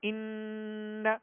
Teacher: ایک الف کی مقدار میں ناک میں آواز لے جا کر آواز کو ٹھہرائیں گے، ایک الف کی مقدار میں غنہ کریں گے، ان۔